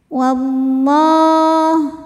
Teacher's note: alif lamnya dinamakan dengan alif lam syamsiyah karena alif lam menghadapi huruf syamsiyah yaitu lam, maka alif lamnya tidak perlu kita baca.